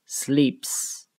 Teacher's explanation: If the last consonant of the word ends in a voiceless sound like the P in sleep, then the S is pronounced as an S